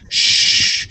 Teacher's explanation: Here you're saying shh, and you're pushing the air over and it's flowing through. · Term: SH sound